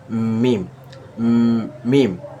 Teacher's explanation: দুই ঠোঁটের শুকনা অংশ থেকে মিম উচ্চারিত হয়